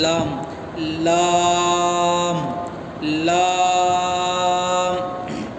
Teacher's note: اب لام، زبان کا جو سامنے والا حصہ ہے، سامنے کا دانت اور اس طرف کے بازو اور پورا ملا کر 6 دانت ہوتے ہیں. 6 دانت، سامنے کے 6 دانت سے لام نکلتا ہے. اگر زبان کو ہم زبان کا سامنے والا حصہ کو لے کر جا کر وہاں پر رکھ کر پڑھیں گے تو لام کا مخرج ادا ہوئے گا.